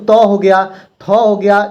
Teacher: जो जिह्वा आपकी है ना, आपके दांत पर लग रही है, और याद रखेंगे इसके उच्चारण में दांत का प्रयोग होता है, दंत का प्रयोग होता है, इसलिए इसको क्या बोलते हैं, त वर्ग का उच्चारण स्थान क्या होता है दोस्तों, तो त वर्ग का उच्चारण स्थान दंत होता है।